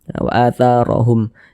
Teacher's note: Wa atharahum, huruf ra memiliki tanda baca harokat fathah, huruf ra memiliki harokat fathah dibaca tebal. Tabkhim, pangkal lisan kita naik terangkat ke atas, ro-nya kita tebalkan. Wa atharahum, tebalkan huruf ra-nya.